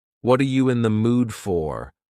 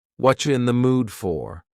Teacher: we often reduce this question and instead of saying what are you in the mood for, we might say what you in the mood for.